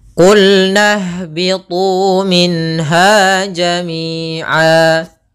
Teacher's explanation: Mad artinya panjang, iwad berarti mengganti. Maksudnya tanwinnya ketika kita waqaf itu tanwin, ketika ini kita ganti menjadi a panjang. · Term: mad iwad